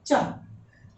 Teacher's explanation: चा किसमें आएगा, अघोष अल्पप्राण, क्योंकि इसमें हवा की कम आवश्यकता होती है